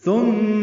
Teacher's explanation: سا نرمی سے ادا کریں گے، میم مشدد پہ غنہ کریں گے